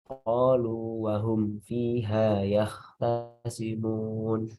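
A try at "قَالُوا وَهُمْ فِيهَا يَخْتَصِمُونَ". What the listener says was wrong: Baik, kha tebalkan ya tasimu.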